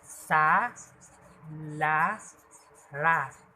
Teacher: Ang ibabaw ng dulong dila ay lumalapi o dumidikit sa punong gilagid. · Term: panggilagid